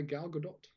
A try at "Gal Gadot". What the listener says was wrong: Yeah, you don't pronounce the T. But it wouldn't have to be that either.